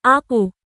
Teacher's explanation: এই স্থান থেকে কাফ হরফটি উচ্চারিত হয়, যেমন আকু। জিহ্বার গোড়ার সামান্য উপরের অংশ এবং এর বরাবর উপরের তালু।